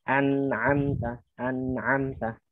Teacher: nun walaupun dia izhar ketemu ain tapi sifat gunnah nun tetap ada. Jadi gunnahnya gunnah yang rendah ya.